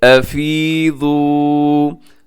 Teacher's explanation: अफीज़ू मिन हैसु, अब अफी यहाँ या मद्दा है, यहाँ लंबा कीजिएगा। अफी और आगे वाव मद्दा है आखिर में, उसे भी आप थोड़ा सा 1 सेकंड तक लंबा कीजिएगा